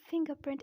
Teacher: I'm pronouncing the second R but not pronouncing the first R. The reason is that this R is followed by P, not by a vowel.